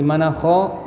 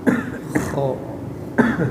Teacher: Dari ujung tenggorokan bagian atas. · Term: huruf kha